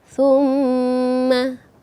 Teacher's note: Ada mim yang bertasydid, sehingga tingkatan dengungnya, tingkatan gunnahnya itu paling atas, dan betul-betul didengungkan, sehingga ketika kita baca summa, terasa dengungnya.